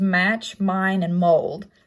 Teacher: Next is the nasal consonants, so M, making the m sound. It's bilabial and it is voiced in words such as match, mine, and mold.